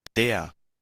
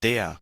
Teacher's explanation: serían pronunciación de Deutsch Standard, que sería con acento no rótico